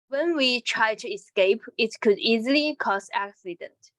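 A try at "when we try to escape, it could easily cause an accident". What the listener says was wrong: I want you to play some more stress on try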